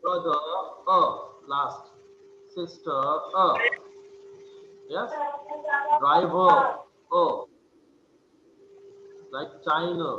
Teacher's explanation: central, half open, and unrounded vowel